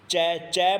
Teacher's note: चै चै बोलते हैं तो अगला जो कोना है जीभ का वो एकदम से ऊपर तालु को स्पर्श करता है